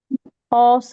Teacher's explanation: और जबान की जड़ देखिए क्या हो रही है, ऑसम पढ़िए। ऑसम, यस, जबान की जड़ पीछे की तरफ उठ रही है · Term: औसम का ऑ